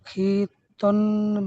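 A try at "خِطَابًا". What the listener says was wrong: খি তন নয়, খিত, খিত, এটা হলো আলিফ মাদ্দা পূর্বের সবকগুলো ভুললে হবে না, যেহেতু আলিফের ডান দিকে যদি জবর হয় তাকে আলিফ মাদ্দা বা এক আলিফ পরিমাণ টান দিয়ে পড়তে হয়। তাহলে মিন হো খিত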